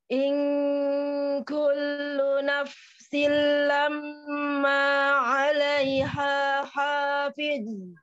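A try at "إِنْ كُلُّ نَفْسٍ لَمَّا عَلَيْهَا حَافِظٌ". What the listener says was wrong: Sudah lebih baik, masya Allah. Ya. Hati-hati huruf ha dengan ha tertukar ya.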